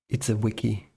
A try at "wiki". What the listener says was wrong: Wiki, like with a W. You said Vicky.